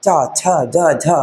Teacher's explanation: चा छा जा झा, इनको बोलने में संघर्ष लगता है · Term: स्पर्श संघर्षी व्यंजन